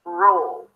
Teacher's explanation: So you round your lips for the R, and we can connect it to the previous R, squir, roll. For the L, you bring the tongue up, but you're also engaging the muscles of the back of the tongue here to create that dark, deep sound of the dark L. Roll. Imagine like you have an off sound between the R and the L.